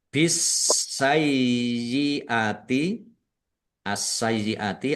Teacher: bertemu dengan huruf hamzah mad wajib muttasil di baca panjang harus lima harakat bisayyiati asayyiati alif lam syamsiyah karena tidak dibaca langsung masuk ke huruf berikutnya yaitu sin ditandai sinnya ada tasdidnya sin-nya dibaca dobel ditekan dan ditahan biar tampak dobel y-nya ada tasdidnya nya dibaca sai dulu.